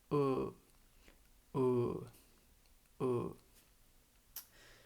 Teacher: You don't even have to open your mouth at all. This sound is produced more in the back of your mouth where the throat begins.